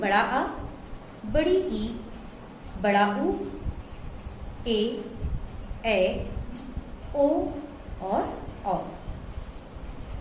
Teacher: जिन स्वरों के उच्चारण में ह्रस्व स्वरों से दोगुना समय लगता है, दुगुना समय लगता है, उन्हें दीर्घ स्वर कहते हैं। व्याकरण की भाषा में इनके उच्चारण में दो मात्रा का समय लगता है।